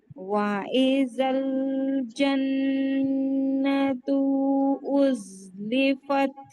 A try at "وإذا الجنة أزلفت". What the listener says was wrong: तो इसके बाद कोई मद नहीं है हम लंबा नहीं करेंगे जन्नतु तू जन्नतु नहीं कोई मद नहीं है जन्नतु उज़लिफ़त